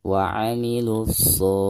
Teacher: dari bacaan lu langsung ke shad, dengan tashdid · Perhatikan alif lam di sini tidak dianggap karena dihukumi alif lam syamsiyah ya. Jadi dari bacaan lu langsung ke shad ya, ditasdidkan